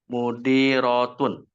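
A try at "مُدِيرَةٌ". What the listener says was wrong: Iya, Mudi Rotun.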